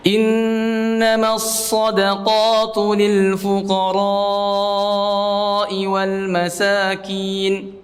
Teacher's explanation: Memanjangkan huruf ra-nya karena mad wajib muttasil